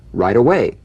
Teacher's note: the final t when it's followed by a word beginning with a vowel again it becomes in effect a medial t